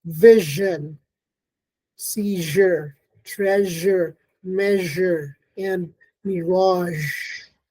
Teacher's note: the tongue blade touches the pallet but not completely producing a small hole through which air passes through with friction · We also have the palatal fricative, the zh, and it's found in words like vision, seizure, treasure, measure, and mirage.